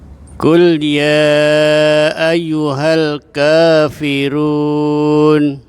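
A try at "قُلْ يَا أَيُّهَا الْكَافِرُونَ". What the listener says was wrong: Ayo, coba ya-nya ditasydid. Ayyuha.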